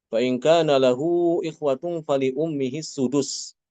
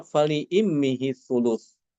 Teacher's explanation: Ini bacaan Imam Hafiz itu dengan mendomahkan huruf hamzah pada kata fali ummihi. Untuk Imam Al-Kisai, dia dengan mengganti doma dengan kasroh. Jadi bacaannya fali immihi thuluth.